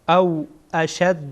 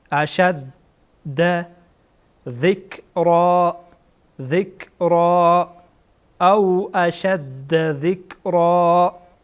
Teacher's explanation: شین با دال با هم وصل میشه. اشد گویا دو تا دال هست